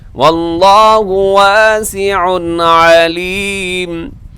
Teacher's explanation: واللہ واسع علیم، واللہ لفظ اللہ پر ہے اور واسع پہ تنوین کے بعد عین ہے، یہاں اظہار کریں گے، غنہ نہیں کریں گے، تیزی سے پڑھیں گے، واللہ واسع علیم۔